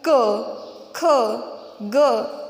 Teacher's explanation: कंठ व्यंजन मतलब हमारे कंठ से यानी कि हमारे गले से जो व्यंजनों का उच्चारण होता है उन्हें कहते हैं कंठ व्यंजन। देखिए उदाहरण के तौर पर अगर हम क, ख, ग इनका उच्चारण करके देखिए, उनका उच्चारण स्थान हमारा गला होता है।